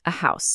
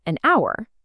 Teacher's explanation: A house because the H is pronounced, but an hour because the H is silent creating an vowel sound.